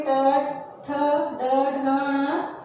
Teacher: ट वर्ग में ट, ठ, ड, ढ, ण, इनका उच्चारण स्थान क्या है? मूर्धा।